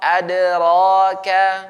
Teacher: Wa ma adraka Nah, di sini ada dal. Karena dal ini dia tipis, maka qalqalahnya juga tipis. Nah, jadi ade bukan ado, bukan ad harus dijelaskan, dikuatkan.